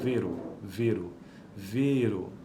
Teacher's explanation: E fechado e longo como em vero